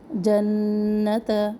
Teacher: نون تشدید، نون مشدد ایک الف کے برابر